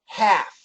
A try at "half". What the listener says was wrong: No. So get rid of that L. Let's make it a H-A-F-F.